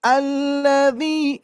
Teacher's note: Alladzi hum, penekannya di dzi.